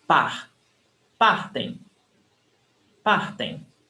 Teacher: And the stressed syllable is before the last. So here we've got only 2 syllables.